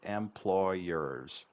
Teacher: We almost double the Y sound,